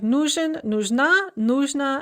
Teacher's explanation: Note the stress shift. Нужен is stressed on the first syllable, but нужна is stressed on the second syllable.